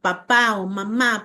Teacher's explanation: papá o mamá, porque ambas son bilabiales